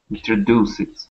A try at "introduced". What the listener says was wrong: Okay, so we're not going to say introduce it. It's more of a straight T sound. Introduced.